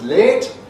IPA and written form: leːt (late)